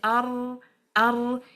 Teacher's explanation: You can say it, but when you say ar, you will see the inhiraf is more clear because you need to stick the tongue to the palate for a while for ar, for the tawassut to take place.